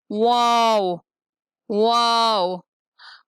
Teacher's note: واو ہونٹوں کو گول کرنے سے ادا ہوتا ہے